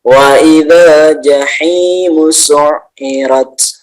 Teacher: Ainnya berat dan ditambah lagi dengan tasydid ya, double ya.